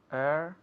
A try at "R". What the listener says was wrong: Air, no. Eso es otro error muy común, te paro. No es air, porque air es aire. R. Porque muchos quieren decir R y quitarle la E, right? But it's R. Es como el verbo. Are you coming? ¿Te vienes? Are you coming? Es igual.